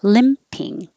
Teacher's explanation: you're going to release the p with the air